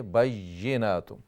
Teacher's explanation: جب آپ شد ادا کریں اور پھر زیر ادا کریں تو آپ میک شور کریں کہ یا ہی آپ ادا کریں، حمزہ کی آواز نہ آئے